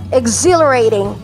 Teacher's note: Ang stress po ay nasa second syllable.